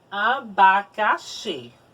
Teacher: Xi é a sílaba tônica